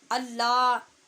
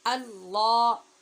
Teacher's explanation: دوسرے لفظ اللہ کا لام، اس کو پر پڑھنا ہے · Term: پر آواز